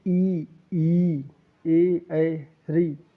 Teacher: अग्रस्वर जिन वर्णों का उच्चारण जीभ के अग्रभाग से होता है